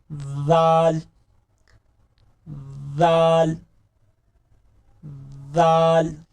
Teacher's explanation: जाल जब अदा करना है तो एक तो सीटी की आवाज नहीं आनी चाहिए, जाल नरम हरूफ है। जाल जुबान की नोक ऊपर वाले दो दांतों के ऊपर लगाएंगे, यहां पर। जाल नरमी के साथ, जोर के साथ नहीं, नरमी के साथ।